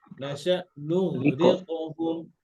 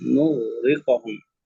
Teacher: এই যে কফটা না একটু পাওয়ার কম হবে কারণ পিছনে কাসরা আছে